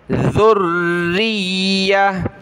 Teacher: ذال پر زبان نکالیں گے، اس ذال کو را کے ساتھ ملایا، را کو یا کے ساتھ، را اور یا ان دونوں کے اوپر یہ تشدید ہے، تو ہم نے دونوں کو سختی کے ساتھ جمع کر پڑھنا ہے۔